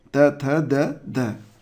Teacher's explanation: जिन ध्वनियों का उच्चारण ऊपर के दांतों पर जीभ लगाने से होता है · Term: दंत्य